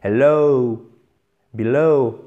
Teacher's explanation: Non, c'est below, below, comme dans hello. Donc, vous faites traîner sur la fin, ça descend, et hop, ça remonte légèrement.